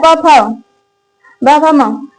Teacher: प भ म का क्या है? ओष्ठ है।